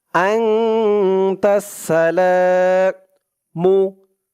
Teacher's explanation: লা এক আলিফ টান, জবরের পরে খালি আলিফ।